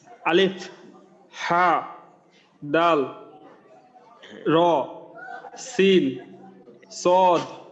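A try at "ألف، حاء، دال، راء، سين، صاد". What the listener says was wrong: এখানে যেখানে টান আছে, যে নামটার মাঝে টান আছে ওই টানটা ঠিক রেখেই বলার চেষ্টা করেন। দাল একটু বেশি লম্বা, র একালি, সিন একটু বেশি লম্বা।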